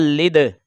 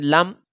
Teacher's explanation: دال حروف قلقلہ ہے تو اس کی آواز لوٹ کر آئے گی، اور یہ غیر قلقلہ ہے میم تو اس کی آواز لوٹ کر نہیں آئے گی